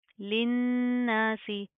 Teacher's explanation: नून के ऊपर शादा गुना किया जाएगा